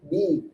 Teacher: Istighfal berkaitan dengan lidahnya. Lidahnya tidak naik tapi rendah. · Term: istifal